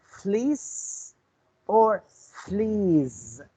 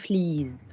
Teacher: When we have 2 words like fleece and fleas, they are identically pronounced the same except for the last sound z. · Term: minimal pairs